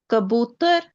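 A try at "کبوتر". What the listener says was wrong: Good, सही है।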